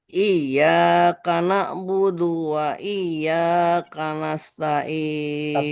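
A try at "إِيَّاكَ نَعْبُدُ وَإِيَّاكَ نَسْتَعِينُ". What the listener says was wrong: Stop. Naknya kurang mengalir. Na'budu. Coba ulangin. Jadi bukan berhentikan na'budu tapi kana'budu. Jadi mengalir. Bukan na'budu.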